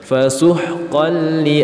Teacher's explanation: suara tanwin dileburkan ke dalam huruf lam tanpa berdengung. Fasuhqan li, bukan lagi fasuhqan li, tapi tanwinnya masuk ke huruf lam dan tidak ditahan atau tidak berdengung. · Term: idgham bila gunnah